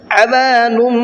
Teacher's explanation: تو یہاں تنوین کی آواز نہیں نکلے گی بلکہ اب میم کی آواز نکلے گی